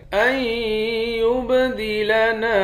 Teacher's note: حمزے کو یا کے ساتھ ملا کر تشدید والے حرف کے ساتھ ملا کر یہاں ادغام کریں گے، یا کے بعد با ہے، با پہ قلقلہ کریں گے